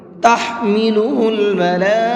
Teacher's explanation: ہا کو حلق سے نکال کر کے پڑھیں گے، اور یہاں پر یہ بڑا مد ہے تو اس کو 4 سے 5 الف کے برابر کھینچ کر کے پڑھیں گے۔